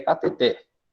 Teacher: O som mais forte vai lá no final, vai na última sílaba. Ela é uma palavra oxítona e não uma palavra paroxítona.